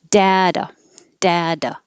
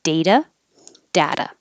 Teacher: D, pushing the airflow, holding it with a lot of pressure, da, and then da, da, quickly. The T is a flap.